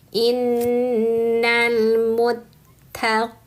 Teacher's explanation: qina panjang dua harakat karena kasrah ketemu ya sukun